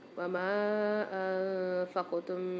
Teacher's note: وما انفقتم میں میم کے ساتھ مد آ رہا ہے، 3 سے 4 خندہ میم کو کھینچیں گے۔ انفقتم میں نون ساکن کے بعد فا آ رہی ہے، یہاں پر غنہ کر کے پڑھیں گے، اور میم ساکن کے بعد دوسری میم مشدد آ رہی ہے، یہاں پر بھی غنہ کر کے پڑھیں گے۔